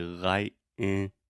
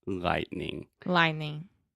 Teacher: when I pronounce it fast, I use a stop T and I say lightning